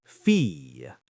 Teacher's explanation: The double L sounds like a Y sound.